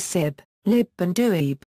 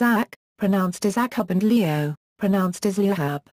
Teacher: In South Connemara, for example, there is a tendency to substitute a b sound at the end of words ending in bh, such as sib, lib and duib, something not found in the rest of Connacht.